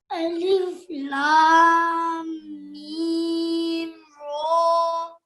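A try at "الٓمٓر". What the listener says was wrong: آپ دیکھو، آپ پتہ کیا کرتے ہو، لام کو لہذا پڑھتے ہو، میم کو لہذا پڑھتے ہو. آپ نے اس کو ملانا ہے ساتھ. ہے الف لام میم.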